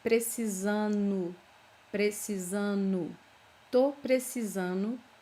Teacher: it's very common to not pronounce this letter D